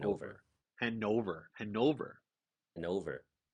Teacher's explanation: See, in English they say Hanover, but then I've adopted the German saying it's Hanover. You hit the second syllable harder.